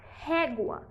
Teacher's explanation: régua tem a penúltima sílaba tônica é uma paroxítona